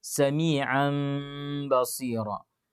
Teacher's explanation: Jadi membaca iklab itu salah satu haknya adalah diberikan gunnah.